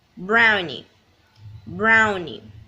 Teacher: The stressed syllables is in brown, brownie.